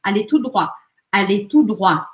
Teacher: E este T, tanto do tout quanto do droit, não é pronunciado.